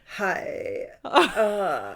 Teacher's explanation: vocal fry was when we went like hi like we had that little like Rumble at the back of our throats